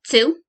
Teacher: people using the sound ts instead of t at the beginning of words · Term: alveolarization